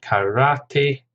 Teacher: Karate, 3 syllables, stress on the second